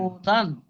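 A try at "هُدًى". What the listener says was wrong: হু টান হচ্ছে কেন? হারাকাত তো, হারাকাত টান হবে না, হুদান।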